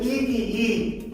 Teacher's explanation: ই হচ্ছে উচ্চ সম্মুখ